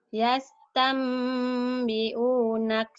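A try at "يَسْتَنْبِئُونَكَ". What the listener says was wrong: Yastambi'u. Bukan hamzah ya. Bukan ain ya, hamzah. Yastambi'unak.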